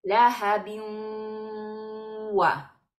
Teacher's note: Estamos fundiendo el sonido del tanwin con la wau y en la wau le estamos dando aguante de sonido. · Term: idgham con gunna